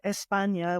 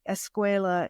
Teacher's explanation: any time that there was a word initial S followed by a stop she would insert an e vowel